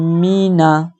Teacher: نون میں گننا نہیں کرنا، ٹھیک ہے، لفظ ہلکا رکھا جائے گا۔